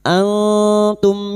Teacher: Kita samarkan bunyi nun sukun dan mendengung selama tiga harakat.